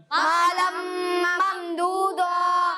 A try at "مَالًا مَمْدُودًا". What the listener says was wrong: مَالًا مَمْدُودًا. اچھا, یہاں غنہ کی مقدار ایک الف کے برابر ہے. اس مقدار کو بعض بچے پورا نہیں کر رہے. ٹھیک ہے, تو یہاں ایک الف کی مقدار تک غنہ کرنا ہے.